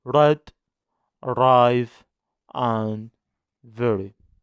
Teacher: tip of the tongue with the alveolar area without any contact